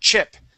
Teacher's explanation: when we say that CH, it's a burst of air